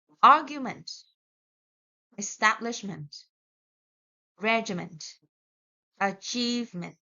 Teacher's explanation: We do not put the stress on ment.